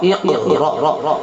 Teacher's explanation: قاف کے اندر قلقلہ بھی ہوگا کیونکہ قاف کے اوپر جزم ہے اور حروف قلقلہ میں سے قاف آ رہا ہے، اس لیے